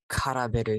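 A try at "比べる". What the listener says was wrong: It's not ka. It's, kurabiru.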